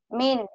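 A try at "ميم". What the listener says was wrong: Mim. Ujungnya M ya, bukan min.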